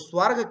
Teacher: इसमें दोनों शब्द संयुक्ताक्षर हैं। स्व की मात्रा 2 हो जा रही है, क्योंकि बाद का संयुक्ताक्षर इसे दीर्घ बना दे रहा है, और जो इसे दीर्घ बना रहा है वो खुद ह्रस्व ही रह जा रहा है।